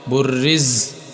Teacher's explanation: ز سیٹی والے حروف میں سے ہے، سختی سے پڑھنا ہے